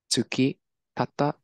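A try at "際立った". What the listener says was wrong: So you said tsuki.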